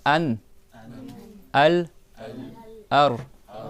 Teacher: Tu vois que plus ou moins la langue elle tape au même endroit à chaque fois derrière les dents du haut.